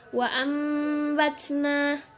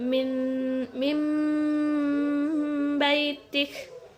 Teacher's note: cara membacanya yaitu dengan menggantikan bunyi nun sukun dengan huruf mim, kemudian didengungkan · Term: Ikhlab